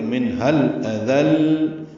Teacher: منها الاذل میں نون ساکن کے بعد ہاں آنے کی وجہ سے اظہار ہے، ہاں کو الاذل کے لام سے ملا دیں گے تو منها الاذل. حمزہ اقصی حلق سے واضح کر کے پڑھیں گے بالجہر، اور دال کو نرمی سے ادا کریں گے، لام سے ملائیں گے.